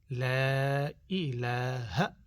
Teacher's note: لا ای، اے نہیں بولنا، ہمارے لوگ اے بولتے ہیں